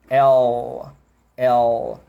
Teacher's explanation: A sua língua ela tá esticada lá para frente